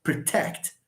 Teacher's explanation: we have a verb we have two syllables stress falls on the second syllable